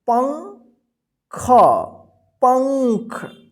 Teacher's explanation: तो देखिए यहाँ पे प है, तो प के ऊपर बिंदी है, तो इसके साथ जो है ना प के साथ आधा न का उच्चारण होगा, ठीक है, पंख, पंख, ठीक। · इसका उच्चारण जो है ना अन होता है, ठीक है, आधा न के रूप में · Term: अनुस्वार